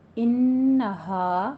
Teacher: انہ پہ غنہ کرنا ہے 2 حرکتوں برابر ، اور ہا میں بھی الف مدہ ہے، اسے بھی 2